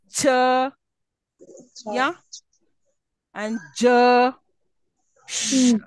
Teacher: the sounds produced with the tongue at the very front of the palate near the alveolar ridge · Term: alveopalatals